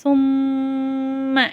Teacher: மீம் மேல ஷத்து வருது அங்க நம்ம குன்னா செஞ்சு ஓதணும்